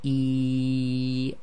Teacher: the air flows all the way from the bottom of the throat out through the front of the mouth except for the middle of the tongue becomes more raised